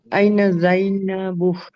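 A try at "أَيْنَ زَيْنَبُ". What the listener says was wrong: আইনা জাইনাবু, প্রশ্নের মতো করে বলতে হবে, হ্যাঁ আইনা জাইনাবু।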